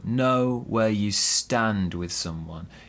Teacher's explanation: so we stress know and stand